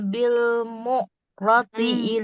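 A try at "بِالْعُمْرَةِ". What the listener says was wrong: mu'roti. Bil umroti, nggak bil mu'roti.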